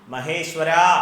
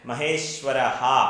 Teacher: മഹേശ്വരഃ എന്ന് തന്നെ ജപിക്കണം, മഹേശ്വര എന്ന് അല്ല ജപിക്കേണ്ടത്. ഇത് സംസ്കൃതത്തിൽ വിസർഗമാണ്.